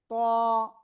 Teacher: জিহ্বার আগা উপরে দুই দাঁতের আগায় না গোড়ায় লাগিয়ে একটু মোটা আওয়াজে উচ্চারণ হবে ত